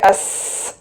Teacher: സീന് പറയുമ്പോൾ vocal കോഡ് ഇങ്ങനെ open ആയിരിക്കും അപ്പോ നന്നായിട്ട് കാറ്റ് ഒഴുകും അപ്പോ കയ്യിലേക്ക് അസ് നല്ലോണം കാറ്റ് ഫീൽ ചെയ്യും പിന്നെ കൈ തൊണ്ടയിൽ വോക്കൽ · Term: ഹംസ്